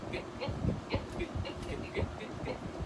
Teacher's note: How about the G, back of the throat?